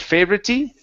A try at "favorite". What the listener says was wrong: okay, this is favorite. Okay, now, watch your tongue on that R. You're saying favorite. Okay, so it's favorite. Now give me a T at the end of the word. Favorite.